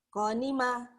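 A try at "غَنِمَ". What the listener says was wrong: Ko, orang Jawa go-nya ko. Go. Gofur. Gofur, gimin, tugiyem, wagiyem, sakit gigi, bu guru sakit gigi, gigi. Orang Jawa G-nya ke hi, ya.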